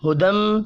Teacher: میم مشدد پر غنہ کریں گے